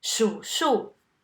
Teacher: The first 数 is in the third tone and it's a verb, meaning to count. The second 数 is in the fourth tone and it's a noun, meaning numbers.